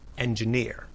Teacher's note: In engineer, the third syllable is stressed. Engineer. The stressed syllable sounds stronger or louder.